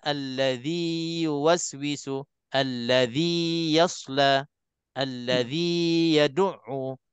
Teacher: Kita baca dua harakat, jangan kita masukkan ke dalam huruf ya. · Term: maddut tamkin